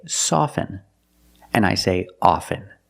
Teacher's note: With both words, I don't pronounce the T.